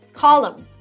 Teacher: this is where you don't pronounce the n at the end of this word